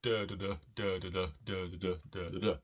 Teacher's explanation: a rhythm which is basically a stressed syllable followed by two unstressed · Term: dactylic hexameter